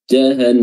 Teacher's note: Di sini kita ada nun tasydid, ya. Nun tasydid itu harus dipanjangkan durasi tasydidnya.